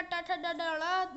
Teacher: ट वर्ग का ट ठ ड ढ ळ मूर्धा है